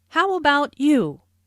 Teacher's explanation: Notice the intonation falls here because the speaker is going to follow it up with a detailed question.